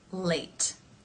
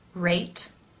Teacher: in the L Sound the lips remain more neutral in the r sound they round somewhat and sometimes at the beginning of a word especially they round